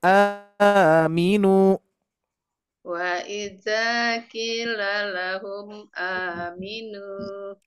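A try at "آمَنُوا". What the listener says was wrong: sepertinya kinnya juga kurang panjang Bu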